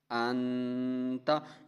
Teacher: یہاں بھی دیکھیں، حمزہ نون زبر ان، تا زبر تا، انتا، یہاں ہم غنہ کر رہے ہیں اس لیے کہ نون کے بعد تا ہے، حروف حلقی میں سے تا نہیں ہے، اس لیے ہم یہاں پر غنہ کریں گے۔